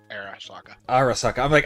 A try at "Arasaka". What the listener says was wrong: You missed an R. Get your inner pirate out. Arasaka.